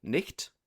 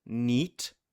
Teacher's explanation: So a word like night, as in nighttime, over the course of the modern era, goes from something like nicht to neat, with the consonant dropped, and the great vowel shift then shifts that vowel into night, and we end up in my current pronunciation.